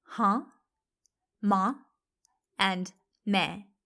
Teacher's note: it's very subtle but can you hear the nasal sound at the end of each word